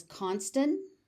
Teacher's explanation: Sometimes you might hear it as constant and the T is not aspirated.